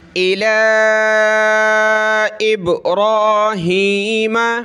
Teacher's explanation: ये लाम पे मद है, खड़ा ज़बर है, इसको हमने खींचना है ऊपर की तरफ